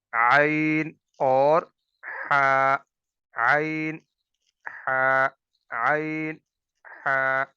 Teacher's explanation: دو حروف ہیں عین اور ہا، یہ وسط حلق یعنی گلے کے درمیان سے ان کی ادائیگی ہوگی